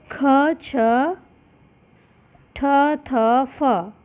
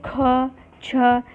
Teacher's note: जब कोई भी वर्ण बोलने में गर्म वायु बाहर निकलती है तो आप समझ जाइए कि ये वर्ण कौन सा होगा? महाप्राण होगा। एक शॉर्ट ट्रिक है इसको समझने की, आप मुँह पे हाथ रख के ज़रूर देखिएगा इसको।